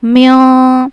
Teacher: نون کی آواز کو ناک میں چھپائیں گے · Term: اخفا